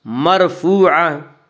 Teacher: سرور مرفوعہ، مرفوعہ، را کو پر پڑھیں گے، اس کا قاعدہ ہے کہ را ساکن سے پہلے زبر آئے اور پیش آئے تو را ساکن کو پر پڑا جائے گا، را ساکن سے پہلے زیر آئے تو را ساکن کو باریک پڑا جائے گا، یہاں را ساکن سے پہلے زبر ہے میم کے اوپر، اس لیے را ساکن کو پر پڑھیں گے۔